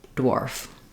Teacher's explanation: you can see that my lips are already rounded for that W as I'm saying the D sound before the before Warf dwarf um it's just a interesting blend